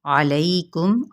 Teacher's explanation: عین کو وسط حلق سے ادا کریں گے، لئی پہ یا لین کا قاعدہ ہو رہا ہے، اور میم پہ اظہار کریں گے میم کی آواز کا، یعنی میم ساکن پڑھیں گے تو یہاں پہ اظہار شفوی کا قاعدہ۔